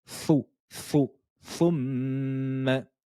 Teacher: Le petit 9 au-dessus de la lettre, c'est le son OU. Et le son OU, il fallait ressortir les lèvres vers l'avant.